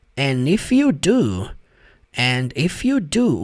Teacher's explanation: Primeiro padrão que tem de pronúncia aqui nessa frase, quando ele fala and if, ele não fala and if com o som de d, ele fala and if, que é a coisa mais normal quanto a essa palavra do and. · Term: o d é sutil